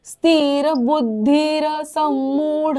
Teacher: र पूर्ण आहे बर का अर्धा नाही बोलायचा